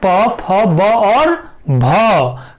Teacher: प फ ब और भ का उच्चारण स्थान क्या होता है, ओष्ठ होता है और इन्हें हम ओष्ठ्य वर्ण भी कहते हैं।